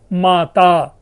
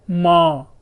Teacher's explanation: पूरा का पूरा ता समूह ही जो है वो विलुप्त होकर के अनुनासिक हो रहा है, नेजलाइजेशन हो रहा है। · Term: अंत्याक्षर लोप